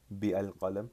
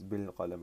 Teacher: If you add a ba particle here, you're not gonna pronounce the alif. You're not gonna say bi al qalam.